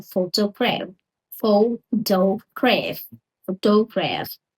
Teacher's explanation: Stress on the first syllable.